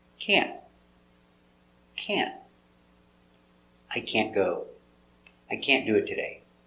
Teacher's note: We don't pronounce the T hard. Make a stop T. Can't. So just put your tongue up and stop.